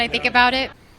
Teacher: So she's tapping her T's there.